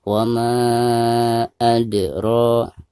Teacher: ro-nya dipanjangkan dua harkat karena dihukumi mad tabi'i